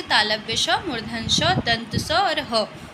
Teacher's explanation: जिनका उच्चारण करते समय रगड़ या घर्षण पैदा हो, गर्मी पैदा हो, तो उसे ऊष्म और संघर्षी कहते हैं